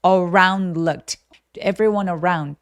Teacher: 자, around 할 때 뒤소리 안 내도 되는 이유는 뭐냐면 요렇게 around looked 자음 NL처럼 자음이 세 개가 뭉쳐 있을 때 보통 중간에 있는 D나 T 소리들을 안 내요